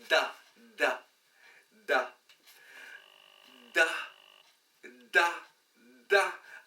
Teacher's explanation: se prononce en donnant du bout de la langue